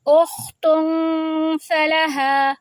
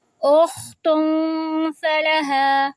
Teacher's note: آگے ہے اخت فلہا، 2 حرکہ آواز لمبی بھی کر رہے ہیں اور نون کے لیے زبان کو اوپر نہیں چپکانا، تو ہماری آواز ناک میں آواز چھپ جائے گی اور 2 حرکہ جتنی لمبی ہوگی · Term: اخفا